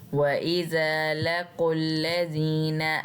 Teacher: यहाँ पे हमने ज़ाल को एक अलिफ जितना लंबा खींच के पढ़ना है, क्योंकि इसके आगे अलिफ है और उसके ऊपर कोई हरकत नहीं है।